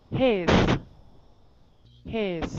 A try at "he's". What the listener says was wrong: Long E. He. He's.